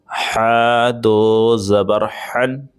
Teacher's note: چلیے ہا دو زبر ہن، اس کا فرق سمجھیں، اس والے میں ہمیں طاقت نہیں لگانا ہے، اس کو نارمل پڑھنا ہے، اور اس والے ہا کو ہمیں حلق سے نکالنا ہے اور تھوڑا سا طاقت بھی لگانا ہے